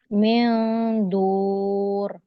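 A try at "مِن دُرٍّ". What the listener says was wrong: nggak dotnya nggak panjang, bukan dur, tapi dur. Kalau ada tasdid berarti ro-nya nggak cuma satu ya, ro-nya ada dua.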